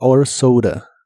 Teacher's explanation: la a de esta palabra se pronuncia con un sonido de inglés que es una combinación entre el sonido e y el sonido a